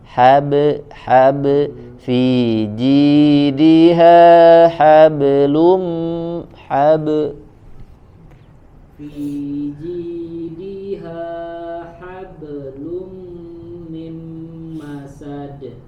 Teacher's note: Fi jidiha hablum min masad. Nah, ini huruf ba-nya dipantulkan. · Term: qalqalah